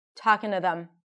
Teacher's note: The word 'them' that we expect to hear with a strong TH and then an E sound also reduces